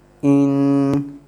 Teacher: That will be the sound of double fatha, double kasra, double dhamma. The only difference is you just have to do little ghunna there. You have to do nasal sound, two n sounds there.